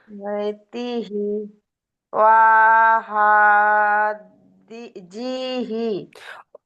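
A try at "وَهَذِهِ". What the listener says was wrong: জি, ওটা টান হয়ে যাচ্ছে, ও টান হবে না।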